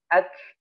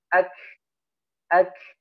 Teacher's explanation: dikeluarkan nafasnya karena dia memiliki sifat hamas